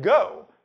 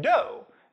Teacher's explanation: You make it by raising the body of your tongue to the soft palate. If you front the sound to the alveolar ridge, you get do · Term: fronting